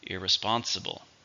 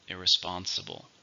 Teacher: 5, with a stress on the third syllable.